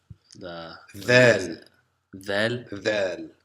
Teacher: So vel is like the th, in that we bring the middle of the tongue out between the teeth and blow air.